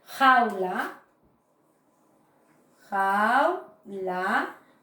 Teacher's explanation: También se produce el diptongo porque hay el encuentro de una vocal abierta más una vocal cerrada. Y suena en una misma sílaba.